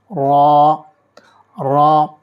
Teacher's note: زبان کی نوک اور اس کے تھوڑا سا پیچھے کا حصہ جب اوپر کے دانتوں کے مسوڑھوں سے لگتا ہے تو را ادا ہوتا ہے۔ اسے بھی موٹا یعنی پر پڑھا جاتا ہے۔